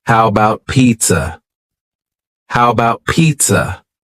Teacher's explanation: the first a in the word about is gone it's just missing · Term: reduced